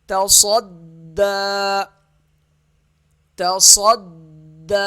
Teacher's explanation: صاد موٹا ہوگا، دال کے ساتھ سختی سے ملے گا، دال کو ایک الف کے برابر کھینچیں گے، کھڑا زبر ہے کیونکہ اس کے اوپر، اور یہ دال کے آگے یا لکھا ہوا ہے، یہ یا نہیں پڑھیں گے۔